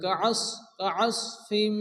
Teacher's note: এখানে সাদকে মোটা করে হালকা মুখটা গোল করে উচ্চারণ করে পড়তে হবে।